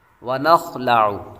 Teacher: ونخلع، واو کے بعد نون، اور نون کے بعد خا حروف مستعلیہ میں سے ہے جس کو ہمیشہ پر پڑھیں گے، آگے لام باریک ہے، اور آخر میں عین کی آواز نکالیں گے۔